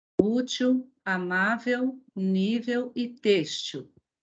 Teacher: Todas são paroxítonas, por quê? Porque todas elas possuem a penúltima sílaba tônica